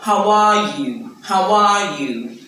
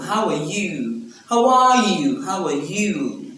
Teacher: when you're responding, you want to ask the person back how the person is, you stress you.